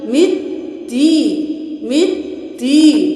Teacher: اب ہم یہاں پہ میم کو دال کے ساتھ ملا دیں گے کیونکہ اس کے اوپر تشدید ہے